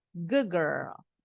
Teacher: berubah mengikuti huruf yang berikutnya jadi bacanya bukan good girl tapi d-nya berubah bunyi jadi G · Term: assimilation